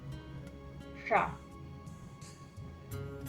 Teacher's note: también es una S, pero el sonido es retroflejo